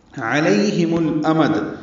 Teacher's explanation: علیہم الامد، یہ لئی یا لین ہے، ہا اقصی حلق سے ادا کریں گے. میم کو لام سے ملائیں گے.